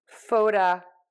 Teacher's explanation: we're going to shift that stress again to photographic. It's right before that ick. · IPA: ˌfoʊtəˈɡræfɪk